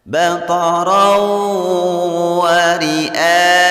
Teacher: Hukum bacaan idgham bi gunnah. Membacanya bunyi ra dimasukkan ke waw dan ditahan 2 harkat atau mendengung 2 harkat.